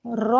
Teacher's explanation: रा के ऊपर जबर होने की वजह से हम र को मोटा पढ़ेंगे